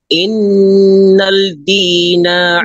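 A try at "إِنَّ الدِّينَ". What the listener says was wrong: Innad din. Diretso ka sa dal. Innad din.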